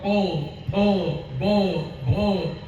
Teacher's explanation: प फ ब भ असं म्हटलं तर आपल्याला ओठ हलवल्याशिवाय म्हणता येईल शक्य नाही, म्हणून या सगळ्यांना ओष्ठ्य अक्षर म्हटलंय